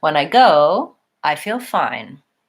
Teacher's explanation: saying I go I would drop all the way down but because there's more to come I rise up to stress the word go and then I just drop back down